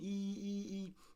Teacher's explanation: pronounced with the first tone E, but only if it's pronounced as a number